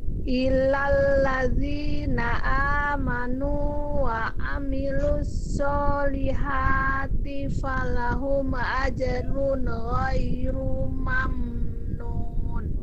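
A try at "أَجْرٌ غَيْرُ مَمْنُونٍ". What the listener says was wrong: Oke, ru-nya tidak dibaca panjang. Ajrun ghairu mamnun. Ghairu mamnun, tidak ru. mamnun.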